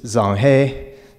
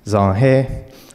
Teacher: you have a low tone on the the first word and then a higher tone on the second one